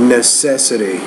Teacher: So the stress is on the second syllable in that word, necessity.